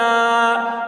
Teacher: ان لام کھڑا زبر لا، لام کے اوپر کھڑا زبر ہے، کھڑا زبر برابر ہوتا ہے الف مدہ کے، اس لیے کھڑا زبر کو ایک الف کے برابر کھینچ کر پڑھیں گے